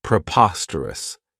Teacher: this adjective has four syllables and the stress is on that second syllable Preposterous remember that OS has that schah that sound this means · We could use it in a sentence and say, "Your statements are not germane to the central argument." The next word, and it's one that I really like, is preposterous. This adjective has 4 syllables, and the stress is on that second syllable, preposterous. Remember that OS has that schwa, that sound.